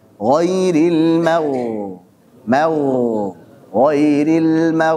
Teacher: Sukun pada kata ghain atau pada huruf ghain dialirkan suaranya karena punya sifat rokhawah. Ghairil ghairil tebal dan dialirkan.